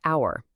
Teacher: It starts with an H, a consonant. But the H is silent. The first sound is, a vowel sound.